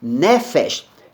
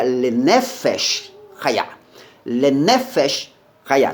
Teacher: A leitura da palavra nefesh não é nefesh. A sílaba tônica é em ne